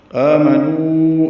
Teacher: نو واو مدہ کے بعد حمزہ آنے کی وجہ سے مد منفصل ہے. آمنو ہم اس کو 4 حرکات لمبا کرتے ہیں.